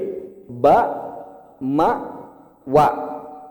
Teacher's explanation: Baru kalau ba, mim, waw, BMW itu 2 bibir.